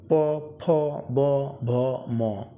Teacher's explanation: উচ্চারণ স্থান ওষ্ঠ, তাই এগুলিকে ওষ্ঠবর্ণ বলা হয়